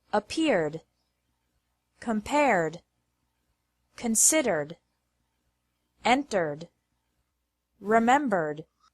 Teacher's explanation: Accept has 2 syllables, and accepted has 3 syllables. Ed is pronounced like D with no extra syllable after verbs ending with an R sound.